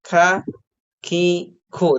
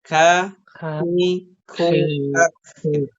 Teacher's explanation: Tapi kalau dari segi suara sama sebenarnya dengan huruf kaf ya, sama-sama tahan, tapi dari segi nafas artinya ketika kita mengucapkan huruf kaf itu ada nafas atau udara yang ngalir ya · ketika kita mengucapkan huruf kaf itu ada nafas atau udara yang ngalir ya. Misalkan ka, ki, ku itu ada udaranya kan?